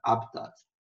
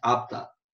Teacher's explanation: Apesar de não ter acento, você pronuncia, né, como sílaba tônica o HA